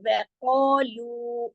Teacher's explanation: آف موٹا ہو جائے گا، ساتھ الف ہے وہ بھی موٹا ہو جائے گا، لیکن لو موٹا نہیں ہوگا، وہ موٹا نہیں ہوگا. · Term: موٹا باریک